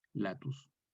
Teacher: Entonces tenemos en primer lugar una A breve, que en latín vulgar corresponde a una A abierta, y en el romance español queda A.